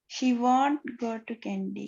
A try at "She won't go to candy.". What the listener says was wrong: She won't go to candy. கொஞ்சம் speed ஆக்க முடியாதாமா? She won't go to candy.